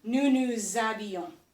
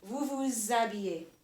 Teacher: So you keep the nous nous, and you have your habillons, but you can get like a linking sound going from the nous to the habillons. So it really becomes nous nous habillons.